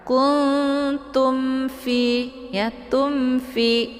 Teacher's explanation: Mim sukun bertemu dengan huruf fa adalah idhar syafawi. Cara bacanya cukup ditekan mimnya saja, kemudian langsung masuk ke huruf fa tanpa harus ditahan. Kuntum fi, ya, tumfi, ditekan saja mimnya karena bunyi mimnya itu jelas bunyi m-nya, ya.